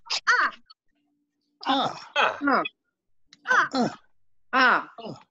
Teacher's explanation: the fourth tone is actually falling from high pitch to the low pitch